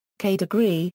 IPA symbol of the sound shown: kʰ